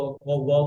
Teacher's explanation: pronounced by the rounding of both lips